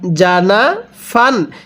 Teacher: এখানে নুনের মধ্যে কোন টান হবে না